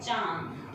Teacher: अनुस्वार का मतलब होता है जिसको हम नाक की सहायता से बोलते हैं, मतलब मुंह की भी सहायता होती है बट नाक की ज्यादा सहायता होती है। जैसे कि चांद, तो चांद बोलते समय जो बिंदु प्रयोग करते हैं वो न का उच्चारण दे रहा है तो वो नाक से बोला जाता है, बट इसका कुछ रूल है, कुछ रेगुलेशन है, उसकी बात करते हैं।